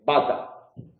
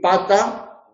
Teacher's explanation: bilabial sonoro, oclusivo, que se distingue del bilabial oclusivo sordo, que es la P.